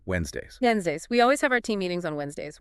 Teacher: the trick here is a silent D. You completely ignore it and just slide right past it.